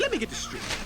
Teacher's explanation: Then, as often happens when a word ending in T is followed by a word ending with TH, we drop the T in get and connect it to this.